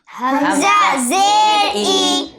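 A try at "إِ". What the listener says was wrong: حمزہ زیر ای۔ اچھا، یہ ای میں جھٹکا نہیں لگنا چاہیے، ٹھیک ہے؟ چونکہ حمزہ کے نیچے جو حرکت ہیں تو حرکت کو بغیر کھینچے، بغیر جھٹکا دیے پڑھتے ہیں، ٹھیک ہے؟ تو حمزہ زیر ای جھٹکا نہیں دیں گے، بلکہ حمزہ زیر ای،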